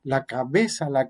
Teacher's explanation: en estos casos aparece también yo diría la bilabial fricativa sonora